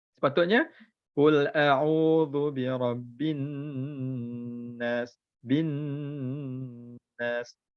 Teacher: tempat nun ada sabdu, so kita kena dengung 2 harakat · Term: wajibul ghunnah